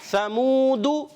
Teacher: سا کی ادائیگی کلیئر رکھنی ہے, سیٹی نہ آئے. حرف مدہ کو ایک الف کھینچیں گے.